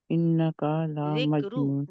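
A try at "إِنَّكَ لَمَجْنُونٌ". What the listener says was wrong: انکا، کیا کو کھینچیں گے نہیں.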